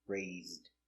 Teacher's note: the s is between two vowels so we pronounce it with a z sound like zebra